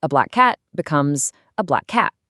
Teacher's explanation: you just merge the two sounds into one slightly longer sound · So, a black cat becomes a black cat. You just hold that C sound for a split second longer.